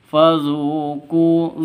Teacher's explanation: zu sama ku sama-sama panjang dua ketukan atau dua harokat